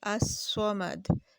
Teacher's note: اب ہم یہاں پر لکھتے ہیں الصمد، صمد لکھتے ہیں، اس کے ساتھ الف اور لام ملاتے ہیں تو ہم اس کو پڑھیں گے الصمد. یعنی کہ الف کو ہم نے ڈائریکٹ صاد سے ملا دیا اور صاد جو ہے وہ حروف شمسیہ میں سے ہے، تو اس کے لیے ہم اس کو پڑھیں گے الصمد. · ہم لام کا تلفظ نہیں کریں گے، بلکہ حروف شمسیہ کے ساتھ اس الف کو ملا کے پڑھیں گے